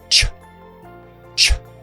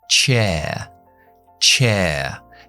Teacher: empieza con lo que llamamos una oclusión, es decir, cogemos presión y explotamos, y terminamos con una fricción, que es sh, sh.